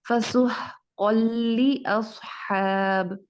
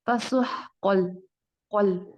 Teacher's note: यहाँ देखें फसुह कौल कौल, ऑफ की आवाज को फौरन लाम के साथ अटैच किया जा रहा है, हालांकि यहाँ तनवीन मौजूद है फिर भी हम नून की आवाज मिस कर रहे हैं।